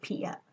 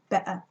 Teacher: the glottal stop there in the middle